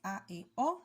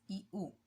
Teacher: Al pronunciar la A, la E y la O, ustedes van a notar que nuestra boca se abre un poco más que cuando pronunciamos la I y la U. Entonces de ahí deriva el nombre, que sean vocales abiertas, porque se pronuncian con la boca un poco más abierta, y las vocales cerradas pues se pronuncian con la boca más cerrada.